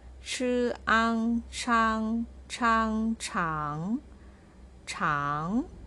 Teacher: ch as a consonant and ang as vowel, pronounced with the second tone on top of a.